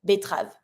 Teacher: This one, when you tend to pronounce it, be careful. The second E, because it's between two strong consonants, such as the T and the R, we tend to skip it.